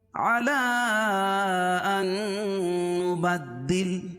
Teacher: حروف مدہ کے بعد حمزہ دوسرے کلمے میں ہو تو مد منفصل ہوتا ہے، اس میں توسط ہے اور قصر بھی جائز ہے